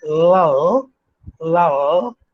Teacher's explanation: the back part of the tongue is moving up toward the back part of the roof